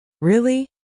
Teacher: when you ask a question like, Really? your voice goes up slightly at the end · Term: rising tone